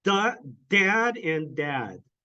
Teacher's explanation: one had the puff of air with the D one didn't